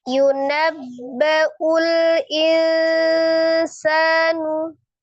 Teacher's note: E karena huruf sin itu huruf pertengahan, maka dia ikhfanya hakiki ausat ya pertengahan dibaca samar ikhfa disertai dengan ghunah · Dibaca samar ikhfa disertai dengan gunnah. Tingkat samar dengan gunnahnya sama. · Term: ikhfa hakiki